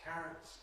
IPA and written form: ˈkærəts (carrots)